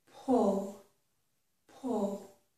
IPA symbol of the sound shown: pʊl